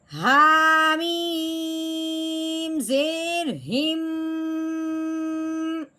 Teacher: मैंने मुंह बंद करके आवाज़ को नाक में से निकाला है, इसको कहते हैं गुन्ना।